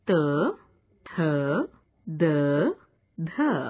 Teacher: इन वर्णों के उच्चारण में जिह्वा की नोक ऊपरी दांतों के मूल को छूती है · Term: दंत्य